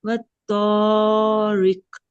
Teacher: یہ را نیچے زیر ہے، اس لیے اس کو ہم باریک پڑھیں گے